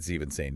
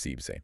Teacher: so they drop the whole n ending it becomes just zeb >> that's a really helpful rule of thumb.